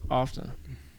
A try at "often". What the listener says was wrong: You don't pronounce the T. It's often. It's often.